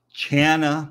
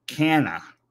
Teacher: in this case CH is not a k sound but a cha sound like a typical CH sound should be